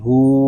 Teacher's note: ہا کو ہم ایک الف تک کھینچ کر پڑھیں گے کیونکہ ہا کے اوپر الٹا پیش ہے